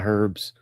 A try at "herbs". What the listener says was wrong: Herbs? You pronounced it like the Brits.